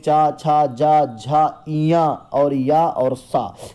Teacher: चा वर्ग में चा, छा, जा, झा, इया और या और सा, ये आपकी तालव्य ध्वनियां हैं।